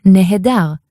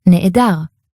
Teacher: Nehedar, where if it's carefully pronounced, you'll hear nehedar. But if it's more sloppily pronounced, that nehe in the beginning turns into ne'e. It's a long e vowel, and you get ne'edar.